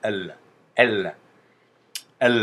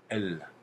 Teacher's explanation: Alors le L russe est un peu plus dur, que notre L français